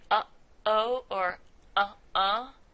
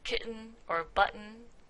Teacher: stop where you cut off the air at your larynx so your vocal cords are totally closed and no air is going through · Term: glottal stop